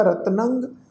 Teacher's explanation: ਨੰਨੇ ਦੇ ਉੱਤੇ ਟਿੱਪੀ ਦੀ ਮਾਤਰਾ ਦਾ ਨਾਸਕ ਉਚਾਰਨ ਹੋਏਗਾ